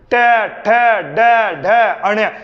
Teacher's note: जब आपकी जीभ उल्टी होकर ऊपर टकराए तो उसे मूर्धा बोलते हैं